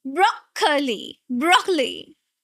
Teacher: Not curly. Do not say o again. It's aw sound.